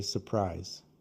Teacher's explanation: most native speakers cut the R and say surprise